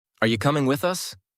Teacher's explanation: Hear how u becomes yah and the melody stays similar but faster.